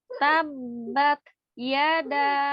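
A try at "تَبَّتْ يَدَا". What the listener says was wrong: Ada alhams huruf taknya. Tidak tabat. Tinggal alhamsnya. Ada udara yang mengalir di huruf tanya. Tidak ditekan. Tidak tabat. Lepaskan ujung lidahnya yang tadinya ada di pangkal gigi seri atas, jangan ditekan, dilepaskan.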